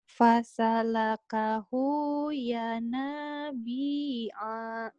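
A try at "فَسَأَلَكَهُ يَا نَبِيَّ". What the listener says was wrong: Pendek A-nya.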